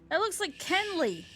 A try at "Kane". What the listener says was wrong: No, not Kenley. Like Shane. Kane. Pronounced like Shane.